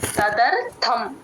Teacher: బంధనః లోకోయం కర్మ బంధనః తదర్థం కర్మ కౌంతేయ తదర్థం ర కింద ఒత్తు తదర్థం కొంచెం మహాప్రాణం గట్టిగా చెప్పాలి టి హెచ్ ఏ థ అండి